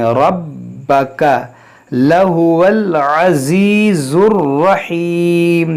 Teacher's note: را پر زبر ہے موٹا پڑھیں گے، با کو خوب جماؤ کے ساتھ پڑھیں گے.